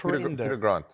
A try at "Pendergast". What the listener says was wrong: Oh, there's no R here. It's Pendergast. You said Pendergast. Peter Grant.